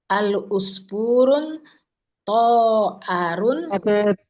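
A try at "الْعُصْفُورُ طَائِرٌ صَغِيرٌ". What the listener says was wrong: Pakai tanwin nggak Ibu? Al-usfurun. Nah, berarti pakai tanwin tidak? Tidak ya. Al-usfuru.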